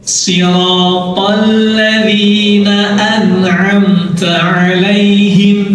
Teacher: Jadi yang benar sirotol, to tebal, al tipis